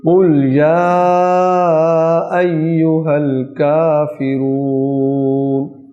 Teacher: سب سے پہلا حرف قاف حلق سے آئے گا